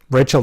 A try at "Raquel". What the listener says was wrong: It's pronounced Raquel because it doesn't have an H.